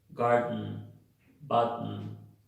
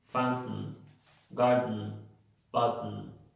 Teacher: Voy como si fuera a sacar la T, pero no la saco, no la hago, no la pronuncio, e inmediatamente hago la N